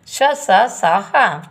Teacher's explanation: इन व्यंजनों के उच्चारण में एक प्रकार की सुरसुराहट सी होती है, अर्थात बोलते समय वायु रगड़ खाती हुई मुख से बाहर निकलती है। इन्हें ऊष्मा, जिससे ऊष्मा उत्पन्न होती है, अतः इन्हें ऊष्म व्यंजन कहते हैं।